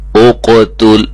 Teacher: اقتل، اب دیکھیں اس کو توجہ سے، یہ قاف اور تا فرق ہونا چاہیے۔ قاف موٹا ہے، تا باریک ہے، یہ نہ ہو کہ ہم تیزی میں پڑھیں اور یہ بھی موٹا ہو جائے۔